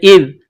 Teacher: ذال زبان کا سرہ تھوڑا سا باہر نکالیں گے، ذال کو پڑھتے وقت ذال کو نرم پڑھیں گے